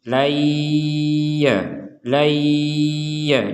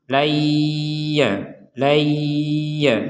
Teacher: laayya jadi disambung kemudian didengungkan Jadi bukan disambung ini tapi dimasukkan Nun sukunnya dimasukkan ke huruf ya Sehingga nun sukun ini sudah tidak terbaca lagi sebagai nun sukun tapi langsung kepada ya